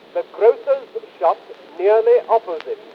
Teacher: Jones has also accurately tracked the rising fundamental frequency pattern on each of the two pre-nuclear accents. Even the pitch of the weak anacrusis the has been heard correctly.